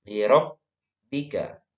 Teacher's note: Bibirnya ditutup, ya disatukan kedua bibir.